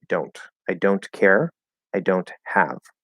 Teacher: So if we clearly enunciate don't, you go up into the N, right? You close the N, you push out the T